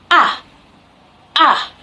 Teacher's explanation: the tongue is laying so low and then we make the sound ah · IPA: /a/